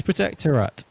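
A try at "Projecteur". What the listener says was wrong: You don't really pronounce the rat bit at the end. This is Projector Rat. So you really pronounce the rat bit.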